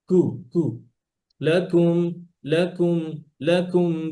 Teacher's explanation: উপরে জিহ্বার গোড়া উপরে শক্ত জায়গা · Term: কাফটা